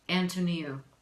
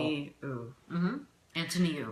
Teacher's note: Knee, that's where the accent is. Knee.